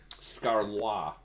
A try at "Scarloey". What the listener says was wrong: I think you're inserting letters there that don't exist.